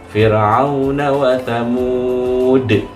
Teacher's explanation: Ada huruf dal yang dibaca qalqalah di ujung.